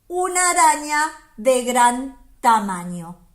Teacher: Se encuentra antes de la letra O y después de la letra N. Otra particularidad, es una letra palatal nasal.